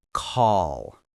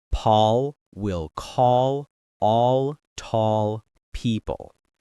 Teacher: The back of your tongue drops down, which creates a deeper, darker sound. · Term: dark L